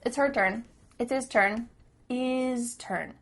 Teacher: The H at the beginning of his and her is cut off.